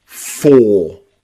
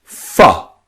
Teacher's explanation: When we're speaking really fast, we change the O to a schwa. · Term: weak forms